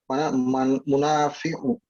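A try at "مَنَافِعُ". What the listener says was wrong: Apa ini yang benar manafi' ya bukan munafi'. Manafi' pakai harakat fathah manafi'.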